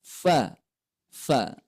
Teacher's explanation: Makhrajnya berada pada ujung gigi seri atas, kemudian ditempelkan atau mengenai bibir perut bawah. Fa. Itu. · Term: huruf fa